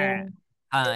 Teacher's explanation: kalau dia ainnya sukun, maka jangan ditahan suaranya. Ya, jangan. Tapi ya mengalir suaranya. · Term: huruf ain yang berharokat sukun